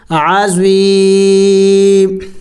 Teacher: وقف میں میم کو سائلنٹ کریں گے، یعنی اس کے اوپر کوئی حرکت نہیں پڑیں گے، پھر ساکن کر دیں گے، کوئی حرکت نہیں پڑیں گے۔